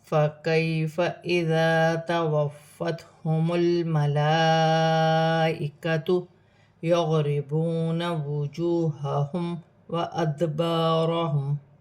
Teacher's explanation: یا ساکن سے پہلے زبر ہے، یالین بنے گی، اسے کھینچا نہیں جائے گا۔ یہاں الف مدہ بن رہی ہے، ایک الف کی مقدار کھینچ کر پڑھا جائے گا۔